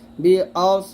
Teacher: এখানে সিনের মত করা যাবে না সদটা মোটা করে বলতে হবে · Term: সদ মোটা